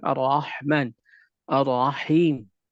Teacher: Ra ditebalkan pembacaannya dalam keadaan difathahkan. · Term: ra yang ditebalkan